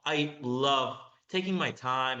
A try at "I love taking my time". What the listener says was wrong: I love taking my time. Again, stress timing is just slightly out. I love taking my time. I love taking my time. I love taking my time. I love taking my time. I love taking my time.